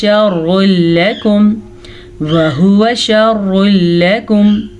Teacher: تنوین کے بعد لام آ گیا ہے تو اسے ہم ادغام بلا غنہ کہتے ہیں